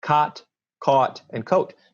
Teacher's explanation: Now, for many people, cot and caught are going to be the same.